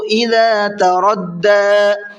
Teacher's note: چھوٹا مد ہے، تھوڑا زیادہ کھینچنا ہے، 1 سے 3 الف کے برابر کھینچ کر کے پڑھیں گے